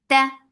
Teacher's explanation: very sharp sound, there is no flow of sound or breath